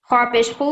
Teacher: حرف خوا کہاں سے ادا ہوتا ہے؟ حلق کے پہلے حصے سے